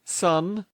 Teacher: Tongue touches alveolar ridge, nasal airflow.